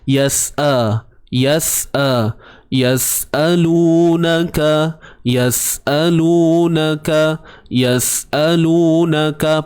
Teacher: Hamzah yang berbaris atas dan dibaca dengan satu harakat sahaja, bukan dua harakat.